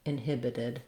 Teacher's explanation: I think probably you can say the full thing with all I vowels, inhibited, with just more length on this vowel I. But in this second to last syllable, it's very, very short and unstressed, so it might even sound like a schwa